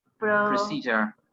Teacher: there's a phonetic process there, and the D converts into che